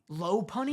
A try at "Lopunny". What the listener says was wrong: It's Lopunny. Where'd you get the A? No, it's just O. It's L-O. No, it's just L-O punny. It's Lopunny.